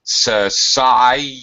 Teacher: there's a Y sound between the I and the E, so we join them together